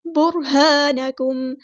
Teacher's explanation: ہا سمپل ادا کریں گے، الف مد آیا تو مد اصلی کریں گے. برہانکم، نون ساکن کی آواز کو یہاں چھپا دیں گے، اخفا ہو رہا ہے